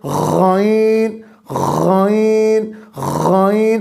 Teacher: تو عزیزان محترم، بات ہو رہی ہے غائن، غائن، غائن حلقی مخارج، گلے کے مخارج میں سے ہے۔ اب گلے کے شروع والا حصہ جو آپ کے منہ کی طرف ہے، وہاں سے غائن، غائن، غائن ادا ہو رہا ہے۔